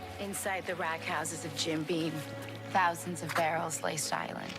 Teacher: she has some really profound vocal fry